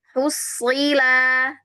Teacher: Lagi Bu, slotnya tadi pindah lagi ke sin, maunya jangan pindah. Yuk, pangkal lidahnya jangan diturunin Ibu. Kalau diturunin dia jadi sin.